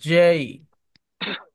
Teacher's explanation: যেই উচ্চারণটা একটু কম্পনের মতো, একটু মোটা করে।